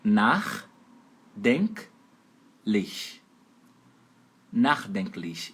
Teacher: E a sílaba tônica é a primeira, fica em cima do A.